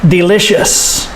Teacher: listen to the stress second syllable delicious and the ious makes the sh sound delicious [Applause] and